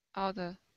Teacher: we switch that T to what's called a flap T. Okay, which is more like a D sound.